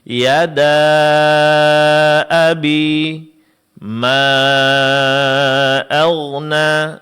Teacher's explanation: Di sini dipanjangkan empat harakat karena bertemunya huruf mad dengan hamzah. Karena pertemuan antara madam hamzah terjadi dalam kata yang terpisah, maka di dalam ilmu tajwid ini namanya mad jaiz munfasil.